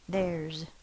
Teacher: because the S is following a voiced consonant, it's a voiced Z sound